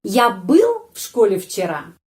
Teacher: Я был в школе вчера. Ya, penekanan intonasi pada kata был.